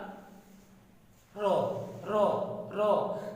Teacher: র যখন বলো জিহ্বাটার একটা কম্পনের সৃষ্টি হয়, আর এই জন্য এর নাম হলো তোমার কম্পনজাত ধ্বনি